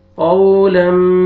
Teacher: یہ واو لین ہے، واو سکون سے پہلے فتحہ، قاف کو آپ نے نرمی سے ادا کرنا ہے.